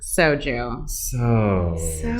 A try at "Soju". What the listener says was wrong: Soju. It sounds like you're saying so like Jew.